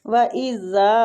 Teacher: وَإِذَا وہ پہ ہونٹوں کو گول کریں گے